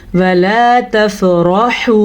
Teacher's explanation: रा को मैंने यहाँ पे मोटा यानी कि पुर करके पढ़ा है, क्योंकि रा के ऊपर ज़बर है। ज़बर या पेश रा के ऊपर आ जाए तो रा पुर यानी कि मोटी पड़ी जाएगी, और अगर रा के नीचे ज़ेर होगी तो रा बारीक पड़ी जाएगी, ठीक है।